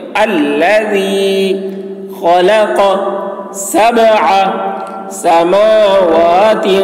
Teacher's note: اگر یہاں پر وقف کرتے ہیں اور الذی سے شروع کریں گے تو الف میں زبر سمجھ کر پڑھیں گے